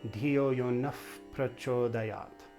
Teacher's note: Whenever that Visarga is followed by a P, instead of just a breath, it gets a little bit pinched and it becomes almost an F.